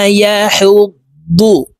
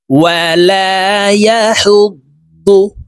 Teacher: দদ হরফকে মোটা ভাবে উচ্চারণ করতে হবে।